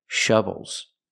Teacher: I need the closed uh uh sound like cup and up. It's more closed.